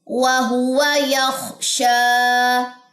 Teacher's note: خا موٹا ہے، شین باریک اور اس میں تفشی ہے، آواز پھیلے گی